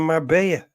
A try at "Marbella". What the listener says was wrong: You're pronouncing it all wrong. It's Marbella. There's clearly L's in there.